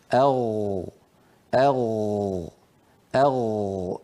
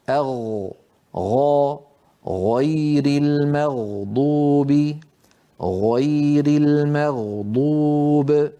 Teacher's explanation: فبين جذر اللسان والحنك اللحمي في هذا المكان الذي ترونه يخرج حرف الغين. ولاحظوا بأن المخرج لا ينقفل، لاحظوا بأن المخرج مفتوح.